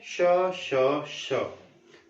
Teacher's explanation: जब ये तीनों बोलेंगे श श श, तो इनमें से कंपन नहीं होता है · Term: अघोष